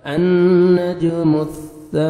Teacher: अन्नज मुस, सा पढ़ेंगे, सीन में या सौद में साउंड नहीं जाना चाहिए। सा, सामने वाले 2 दांत हैं उनके नीचे ज़बान को लाइट से टच करेंगे तो सा अदा होएगा। अन्नजमु सा, अलिफ मद है, सा को आपने 1 सेकंड खींचना भी है।